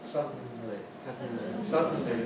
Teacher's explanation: Indeed, then the tongue tip stays there on the alveolar ridge for the end, suddenly. And the sides of the tongue move, but the tongue in the middle stays in place